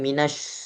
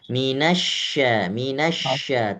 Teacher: Syin itu adalah huruf yang ketika diucapkan anginnya tersebar. Jadi tidak boleh berkumpul jadi satu.